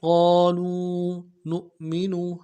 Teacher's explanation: اللہ، بما انزل اللہ، قالوا نؤمن، قاف کو موٹا کرنا ہے، قاف کے ساتھ الف مدہ ہے، ایک الف دال میں کھینچیں گے ، لام کو واو کے ساتھ ملانا ہے، واو مدہ ایک